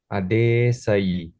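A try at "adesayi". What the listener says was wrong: Yes, you forgot your long E, The rest, I think, very well done, brother.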